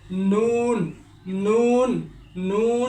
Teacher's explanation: 9 নম্বর মাখরাজ, অনেক সহজ একটি মাখরাজ, জিহ্বার আগা তার বরাবর উপরের তালুর সঙ্গে লাগিয়ে নুন উচ্চারিত হয়